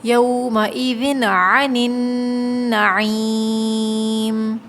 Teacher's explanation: تنوین پر ہوتا ہے غنہ، لیکن یہاں ہم غنہ نہیں کریں گے، اس لیے کہ اس کے بعد جو عین آ رہا ہے یہ حروف حلقی ہے، اور جب حروف حلقی آ جائے تو غنہ نہیں ہوتا، ٹھیک ہے، تو یہاں غنہ نہیں ہوگا۔